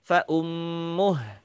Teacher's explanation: Tapi kalau saya baca dengan berhenti fa'ummuh, maka silah qasirahnya menjadi hilang.